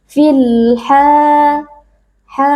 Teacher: dibaca panjang dua harakat karena ada mad thabi'i